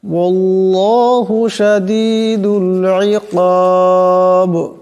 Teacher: আল্লাহ লামকে মোটা করিয়া পড়তে হবে